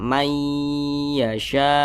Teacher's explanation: jadi bunyi nun sukun ini dimasukkan ke huruf ya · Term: idgham bhunah